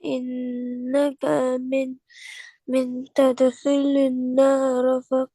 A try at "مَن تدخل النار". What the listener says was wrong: بس دیکھیے گا من نہیں ہے، میم کے اوپر زبر ہے، من، اور تدخل النار،